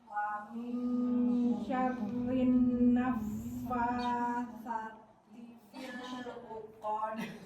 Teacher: Jadi fa-nya tuh kayak ada udaranya dulu ya. Naffa enggak naffa.